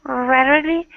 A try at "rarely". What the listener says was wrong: Okay, so rarely sounded like it had a little too much a little too much stress on the second syllable. It sounded like rarely. Really, it should be rarely. Rarely.